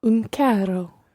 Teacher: I'm obviously over-rolling my R's here. I'm making a quadruple R rather than a double R with carro.